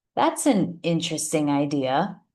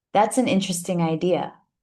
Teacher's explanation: If we put more emphasis on interesting, the person will sense that you don't actually like the idea and that you're not being genuine.